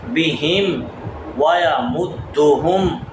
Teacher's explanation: ویمدہم میم کو دال کے ساتھ ملانا ہے